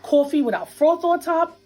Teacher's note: One feature common in New York City is what we call a raised vowel in words like thought and cloth. It sounds something like aw.